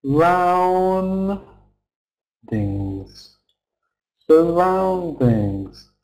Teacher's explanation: surroundings. Surroundings. With the schwa sound after the s.